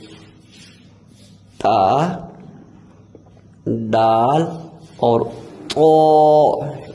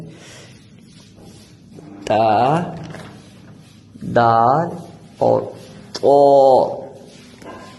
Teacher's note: زبان کی نوک اوپر والے جو سامنے کے 2 دانت ہیں، جن کو ہم نے ثنایا علیہ کی کہتے تھے، ان کی جڑ پر لگتی ہے تو یہ 3 حروف ادا ہوتے ہیں۔ یعنی زبان کی نوک کو اوپر والے جو دانت ہیں، ان دانتوں کے ساتھ نہیں، جو پیچھے مسوڑے ہیں، یعنی جو ان کی جڑ ہے دانتوں کی، جہاں سے دانت نکل رہے ہیں باہر، مسوڑے وہاں پر ٹچ کرنا ہے، تو یہ 3 حروف ادا ہوں گے، تا، دال اور طو۔ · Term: نطعیہ